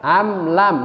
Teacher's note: Am mim mati ketemu dengan lam. Am lam ya, tidak boleh dengung juga. Jadi tidak boleh kita baca am lam gitu, nggak boleh karena dia izhar. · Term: izhar syafawi